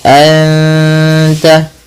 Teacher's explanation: Nun mati bertemu ta. Dua harakat sambil ditahan ghunnahnya. Sambil ditahan bunyi suara dengungannya. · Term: ikhfa hakiki